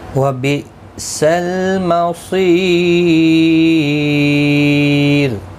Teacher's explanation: جب بھی را ساکن سے پہلے یا ساکن آتا ہے تو را ساکن باریک پڑھا جاتا ہے، تو وقف کی صورت میں را باریک پڑھا جائے گا. یہاں پر وقف تام ہے، آیت مکمل ہوتی ہے.